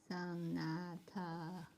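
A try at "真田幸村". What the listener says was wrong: That's a D. Sana. Sanada Yukimura. Sanada Yukimura.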